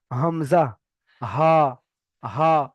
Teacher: এখানে রয়েছে হামজা হা। হালাকের বা কণ্ঠনালীর শুরু হতে উচ্চারিত হয়।